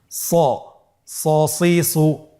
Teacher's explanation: হরফটি যেহেতু মোটা অক্ষর, এই হরফটি সা বলা যাবে না, স বলতে হবে, একটু মোটা করে বলতে হবে।